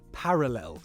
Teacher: the R sound is produced by the tongue briefly tapping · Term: alveolar tap